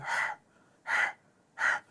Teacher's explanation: ह जो है इसे दरमियान वाली हलक से अदा करते हैं। तो इसमें सिर्फ हवा आएगी